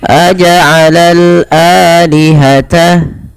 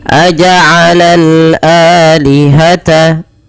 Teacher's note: Dipanjangkan 2 harokat karena ia mad badal adanya hamzah bertemu dengan alif.